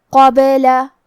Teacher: کیونکہ با پہ جزم ہے لہذا ہمیں با کو قلقلہ سے پڑھنا ہے